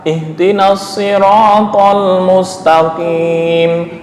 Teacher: yang penting qaf itu pangkal lidah sebelah dalam, agak masuk. Kalau kaf lebih ke atas